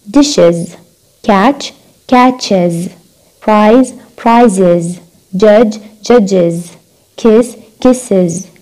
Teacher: اذا كان هذول الاحرف يجوا قبل الاس اللي هو الحرف الاخير بنلفظ الاس، الاس بتصير نلفظها is